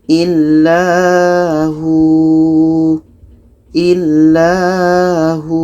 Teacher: Jadi di sini ada waw mati sebelumnya baris depan, maka ini panjang. Hu ini panjang sebab waw mati sebelumnya baris depan. Kita baca illahu.